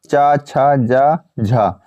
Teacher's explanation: आपसे बनने लगे ठीक है अब आता है स्पर्श संघर्षी यानी स्पर्श संघर्षी स्पर्श के साथ संघर्ष करते हैं